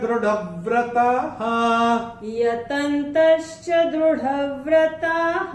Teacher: विसर्ग चरण की समाप्ति पे आ रहा है, तो इसका उच्चारण केवल और केवल ह ही होगा।